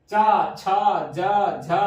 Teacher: स्पर्श तो हो रहा है लेकिन संघर्ष के साथ जो है ये वर्ण उच्चरित हो रहे हैं। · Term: स्पर्श संघर्षी